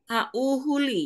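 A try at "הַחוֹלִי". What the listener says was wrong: O, bukan U. Holi. Holi. Holi. O, Holi Ini kan H. Lalu ini O. Ini bacanya bukan A tapi O. ini juga Ho. Holi. Ya, Holi.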